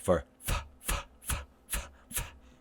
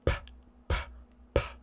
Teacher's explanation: If we don't put our teeth down, or if we close our lips, what sound gets made? P, p, p. It becomes a bilabial stop. So we have to make sure that we open our lip and put our teeth down.